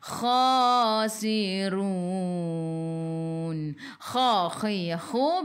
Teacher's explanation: biar ada angin biar menggelegak. Kha 2 harakat ada alif kecil mat asli.